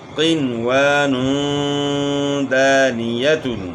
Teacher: یہاں 2 پیش کی تنوین کے بعد دال آ گیا ہے، تو یہاں بھی غنہ اخفا کے ساتھ ہوگا